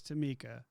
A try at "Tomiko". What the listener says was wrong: It's Tomiko. You said Tomika.